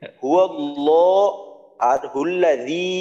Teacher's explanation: আল্লাহ শব্দ এখানে মোটা করতে হবে। হুয়াল্লাহ আর হুল্লাযী, জি কিন্তু এক আলিফ, জি এক আলিফ টান, লা তিন আলিফ টান।